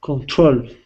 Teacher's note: control with the stress at the end of the word. Instead of control, control.